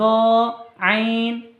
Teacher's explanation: গলার মাঝখানে হইতে উচ্চারিত হয়